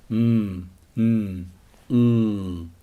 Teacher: sounds made through the nose that is to say the air can't get out the mouth at all mmm comes out through the nose mmm mmm mmm the stop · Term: nasals